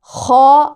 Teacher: अदना हलक से मुंह की तरफ आवाज़ खौ आएगी